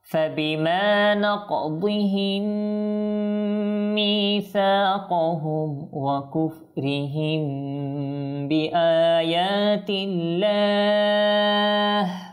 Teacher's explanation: মিম সাকিনের পর যেহেতু বা এসেছে, আর এটা হচ্ছে মিম সাকিনের পর বা আসলে ইকফাই শাফাবি হবে, অর্থাৎ ইকফা করে পড়তে হবে